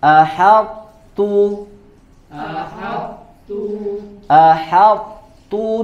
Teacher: diidghamkan ke huruf ta tetapi disisakan sifat itbaaknya